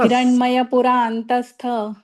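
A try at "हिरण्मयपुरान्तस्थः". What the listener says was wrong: नाही, स्थ नाही इथे स दिलेला आहे ना, पण त्या विसर्गाचा उच्चार श करायचा. हिरण्मय पुरांतस्थस असं.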